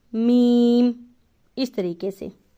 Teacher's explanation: دونوں ہونٹوں کے بیرونی خشکی والے حصے کو ملانے سے میم ادا ہوتا ہے۔ یعنی کہ جب ہم اپنے ہونٹ اس طرح سے بند کرتے ہیں تو یہ جو ڈرائی پلیس ہوتی ہے، ڈرائی ایریا جب ہم بند کرتے ہیں، نارمل آپ بند کر کے دیکھیں ایسے بالکل بند، تو جو خشک حصہ آپس میں ملتا ہے نا کر کے، وہاں سے میم ادا ہوتا ہے۔